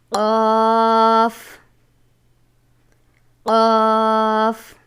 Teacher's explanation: زبان کی جڑ اور تالو کے نرم حصہ سے ادا ہوتا ہے. یہ بھی حروف مصعلیہ میں سے ہے، جسے ہمیشہ پر پڑھا جاتا ہے.